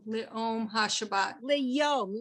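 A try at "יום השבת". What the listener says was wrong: Yom, not Om, Yom.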